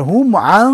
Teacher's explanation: এখানে কিন্তু একটা গুন্না আছে সেই গুন্নাটা হচ্ছে ইখফা গুন্না